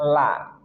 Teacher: lam dari dua ujung sisi lidah hingga ke akhirnya itu ke ujungnya bertemu dengan gusi atas di hadapannya la. Dan ingat huruf lam termasuk huruf tark tipis jangan sampai ditebalkan jadi la.